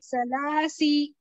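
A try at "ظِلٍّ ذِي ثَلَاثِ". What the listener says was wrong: हाँ जी जिल्ली सलासी, स को जबान की नोक बाहर यानी दोनों दांतों के किनारों को लगना चाहिए सामने वाले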